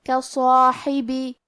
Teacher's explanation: مد الف اپنے پیچھے والے حرف کا حکم لیتا ہے تفخیم میں اور ترقیق میں، تو کیونکہ اس کے پہلے حرف الصاد کا حکم ہے تفخیم، لہذا ہم صاد کو اور مد الف کو دونوں کو بھاری آواز میں پڑھیں گے